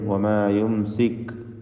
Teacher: സാക്കിന മീം ഇൽഹാർ ഷഫവി നൽകി മണിക്കാതെ വെളിവാക്കണം